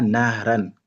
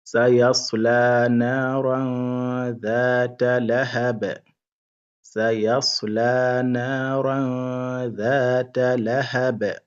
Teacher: Donc on fait ce qu'on appelle al-ikhfa, c'est-à-dire il faut prolonger un peu et faire un peu de ghunna